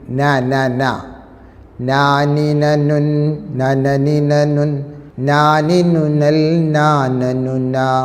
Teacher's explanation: നാവിൻ്റെ തല മേലെ മുൻപല്ലിൻ്റെ ഊന്. നാവിൻ്റെ തല അത് മേലെ മുൻപല്ലിൻ്റെ ഊന്.